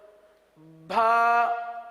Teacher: بھا یعنی با کے ساتھ ہا کی آواز نکالی جاتی ہے